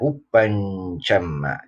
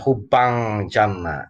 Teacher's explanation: Samarnya N-nya samar kepada huruf setelahnya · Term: ikhfa